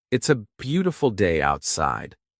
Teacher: Notice how the B in beautiful makes both lips touch. Notice how the T in outside makes the tongue touch the top of the mouth.